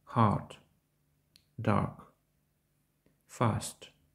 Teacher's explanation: Звук схожий на український голосний «а», однак при вимові язик відсувається назад до горла, чутно легкий призвук «о»